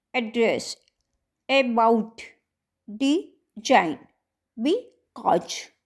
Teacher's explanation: stress on the second syllable एड्रेस, अबाउट, डिजाइन, बी कॉज